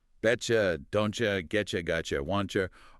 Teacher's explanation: These 5 examples, Betcha, don'tcha, getcha, gotcha, wantcha are the core of the T plus U coalescence. The moment your mouth anticipates the Y sound of U immediately after a T sound, it instinctively shifts to that familiar she sound.